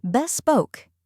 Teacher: Next is spoke, which rhymes with broke and is stressed.